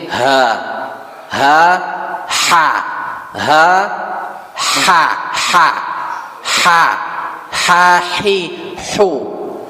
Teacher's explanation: Kalau ha hi hu itu di tengah tenggorokan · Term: ha yang kecil